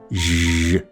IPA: ʒ